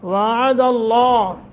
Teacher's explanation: वअद अल्लाह, वाव को मोटा करना है, लफ्ज़ अल्लाह इस पर तफ़ख़ीम करनी है, यानी मुँह भर के पढ़ना है